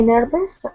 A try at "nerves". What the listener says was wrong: One syllable, yeah, nerves.